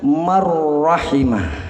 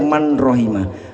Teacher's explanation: Man rohimah dimasuki oleh hukum idgham bila gunnah, maka bacaannya marrahimah. Tidak boleh baca man rohimah, marrahimah.